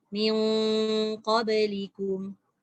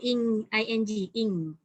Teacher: Dia ada sekatan iaitu mengangkat pangkal lidah ke langit sampai dia melekat, menyebabkan yang suara tadi tu dah tak keluar lagi kat mulut. Dia lebih kepada atas.